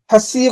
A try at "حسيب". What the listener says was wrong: হাটা একটু চাপ করতে হবে, হাসিবা,